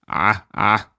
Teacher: you're squeezing that larynx at the back of your throat